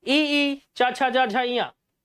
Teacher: तालव्य में आती हैं, क्योंकि तालु को टच हो रहा है जीभ